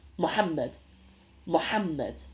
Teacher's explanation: the X in Somali is a ha sound so the name Muhammad has an X rather than an H it's a stronger sound Muhammad muhamed also in the word meaning like herbs or spices